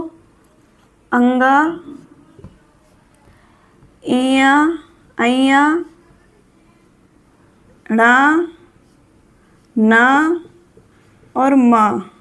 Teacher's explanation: इनके उच्चारण में हवा मुख से अवरुद्ध होकर नाक से निकलती है। तो इसलिए नासिक के व्यंजन होते हैं। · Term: नासिक्य व्यंजन